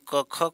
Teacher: अघोष यानी क ख को बोलने में कोई कंपन नहीं होता लेकिन बाकी तीन को बोलने में जो है कंपन होता है